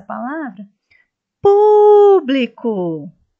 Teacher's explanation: a sílaba pu é a sílaba tônica